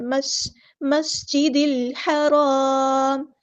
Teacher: سین سیٹی ہم واضح کریں گے